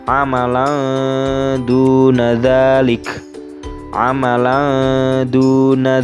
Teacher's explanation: fathah tanwin yang terdapat pada lam alif dibaca samar karena di situ bertemu dengan huruf Dal